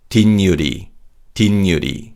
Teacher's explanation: for 뒷유리, 시옷 받침 changes to a 니은 sound, and 니은 is added to 유. Also, the vowel we weakens, so it sounds like e.